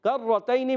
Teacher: کرتین میں کاف باریک، زبان کی جڑ اور تالو کے سخت حصے سے کاف ادا ہوتا ہے